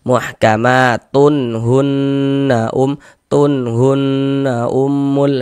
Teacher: Maka kalau ada nun sukun atau tanwin bertemu dengan salah satu daripada enam huruf yang di samping itu, maka hukumnya adalah izhar halqi. Maka dibaca jelas tak berdengung. Tanwinnya kita baca jelas.